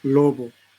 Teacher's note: Este fono, ¿no?, bilabial, fricativo, sonoro